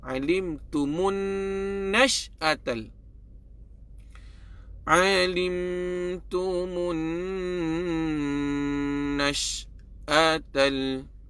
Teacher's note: Nun sabdu wajib kita dengung. Wajib kita dengung. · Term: dengung dua harakat